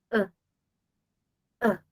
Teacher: En el inglés hay más vocales, en el inglés hay esa la schwa, ah, esa que dice, usted coloca su boca en posición de descanso y permite que el sonido salga y sale una schwa